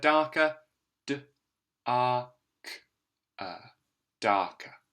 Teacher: we've got the AR spelling of that ah sound and notice we've got that short sound that schwa sound